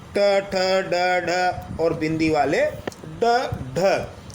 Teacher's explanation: इन व्यंजनों के उच्चारण में हमारी जीभ जो ऊपर वाले जबड़े का शीर्ष स्थान है जिसे हम मूर्धा कहते हैं उसे स्पर्श करती है और जीभ वापस झटके से बाहर आती है। इसे उच्छित व्यंजन कहते हैं यानी जीभ झटके से वापस आती है यानी उछलती हुई आती है, उच्छित।